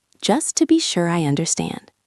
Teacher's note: Listen to the intonation. It goes up a little bit at the end of understand.